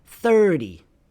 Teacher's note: You have 3 and 0, so the stress will be on the first part of the word